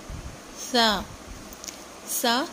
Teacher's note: زبان کی نوک سامنے والے دانتوں کے اندرونی کناروں سے جب ٹکراتی ہے تو سا ادا ہوتا ہے